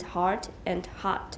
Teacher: Most Americans use the same vowel sound in the words heart and hot